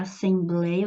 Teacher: a penúltima sílaba é a mais forte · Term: paroxítona